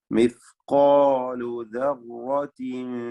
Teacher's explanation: റായിനും തഫ്ഖീമാണ്. റായിന് തക്രീർ വരാതെ സൂക്ഷിക്കണം.